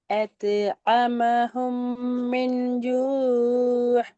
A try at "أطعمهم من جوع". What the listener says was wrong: இல்ல ஐன் வரல, ஹா தான் வருது. ஜூ யா.